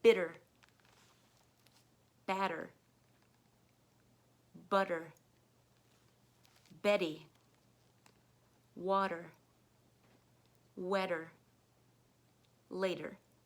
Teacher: turn the T into a D sound